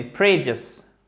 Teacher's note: Accent tonique sur la première syllabe. Pour la petite règle, quand ça se finit par ius, comme ça, l'accent tonique il est sur la syllabe précédente.